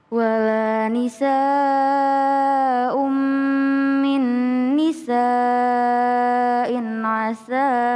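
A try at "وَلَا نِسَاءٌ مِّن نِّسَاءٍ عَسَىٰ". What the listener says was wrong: Jangan terlalu panjang kalau berhenti. Sa'in asa.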